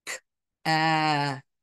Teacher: we do have the two stops, one at the beginning and one at the end